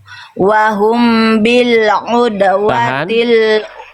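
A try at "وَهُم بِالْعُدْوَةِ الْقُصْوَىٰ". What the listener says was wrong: Ini barusan kita bahas Bunda, mim sukun ketemu huruf ba, dengarkan dulu baru baca. Mim sukun ketemu huruf ba, Ifa syafawi, amnya ditahan dulu ya. Wahum bil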